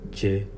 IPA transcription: t͡ʃe